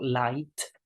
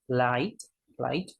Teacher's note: the tip of our tongue touches the alveolar ridge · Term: light L